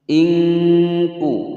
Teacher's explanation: nun sukun bertemu dengan huruf kaf disamarkan dan didengungkan, hukum bacaan ikhfa ab'ad.